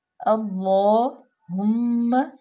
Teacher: اللہم بارک، حمزہ زبر، لام جو ہے وہ مشدد ہے، لام پہ کھڑے زبر بھی ہے اور اس کو تھوڑا سا لمبا بھی کریں گے۔ اللہم، ہا انتہائی حلق سے، ہا پہ ہا ضمہ ہے، مضموم ہے، اور میم مشدد ہے، یہاں پہ غنہ بھی کریں گے